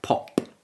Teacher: when you speak and you say words like pop you've got that that gush of air that comes out for making the P sound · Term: plosives